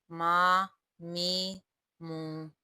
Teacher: میم دونوں ہونٹوں کے خشک حصے سے ادا ہوتا ہے۔ میم زبر ما، میم زیر می، میم پیش مو، ما می مو۔